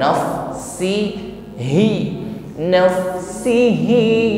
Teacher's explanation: Raih makhraj untuk huruf ha, keluarkan dari aqsa halqi, bagian terdalam tenggorokan; Buatlah suara itu bergema, jangan biarkan suara itu melayang.